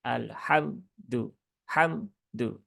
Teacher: tidak ada sama sekali gunahnya dan sifatnya jadi syidah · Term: memotong gunah